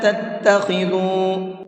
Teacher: چھوٹا مد ہے تو اس کو 1 سے 3 الف کے برابر کھینچ کر کے پڑھیں گے